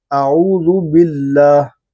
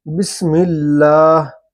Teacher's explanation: لفظ اللہ کے لام سے پہلے زیر آیا ہوا ہے تو اس کو باریک کر کے پڑھا جا رہا ہے